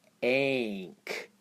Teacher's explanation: ank almost sounds closer to a long vowel actually there but it's not quite a full long vowel sound